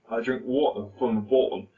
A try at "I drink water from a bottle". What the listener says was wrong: it sounds like you said I drink water from a button you're going you're going Scottish there